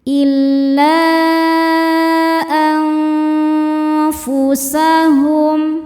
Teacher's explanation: Karena nun sukun bertemu huruf fa. Cara bacanya nun sukun dibunyikan samar-samar menuju makhraj fa disertai dengung. Dengung dan kesamarannya sama besar. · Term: ikhfa hakiki awsat